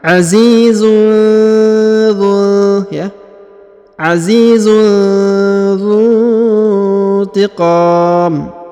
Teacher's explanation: tanwin un bertemu dengan huruf dha, maka didengungkan dan disamarkan.